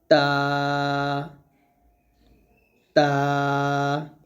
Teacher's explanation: জিহ্বার আগা উপরে দাঁতের আগার সাথে লাগিয়ে তা উচ্চারণ করতে হবে